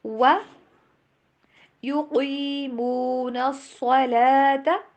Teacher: و کو ڈبلیو والی ساؤنڈ کے اوپر پروناؤنس کیجیے، وی والی پہ نہیں